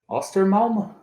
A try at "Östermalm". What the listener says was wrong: Yeah, it's actually pretty close. It's really close. Though it is like you see the O to the left that has 2 points on it. That's pronounced as It's like Östermalm.